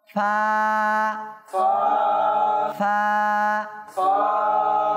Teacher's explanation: উপরের দাঁতের আগা, নিচের ঠোঁটের বীজাংশ এভাবে